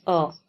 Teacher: अगर हम अ को बोलते हैं तो ध्वनि कहां से निकल रही है? हमारे कंठ से। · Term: कंठ वर्ण